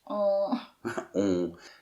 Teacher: on peut dire peut-être la plus nasale de toutes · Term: nasale on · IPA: [ɔ̃]